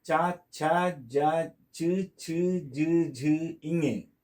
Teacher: They take their birth in palatals, the upper part of the jaw, upper jaw. That is called as palatals.